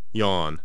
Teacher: 现在，让我们先来听一遍发音。一。现在，我们来看一下口型演示，体会发这个音的口型特点。一。现在，让我们来看看发音规则。舌前部向硬腭尽量抬起，舌位很高，和一相似。双唇向两边伸展成扁平形，口型和一相似。这个音是浊辅音，发音时声带震动，单独发音时后面可以加元音呃，念作呀。 它发音短暂，立刻向后面的元音滑动。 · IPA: [j]